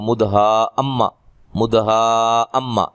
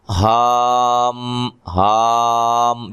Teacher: سیدھا ہا کو میم سے ملا دینا ہے، بیچ میں آواز کٹنے نہ پائے، ختم نہ ہو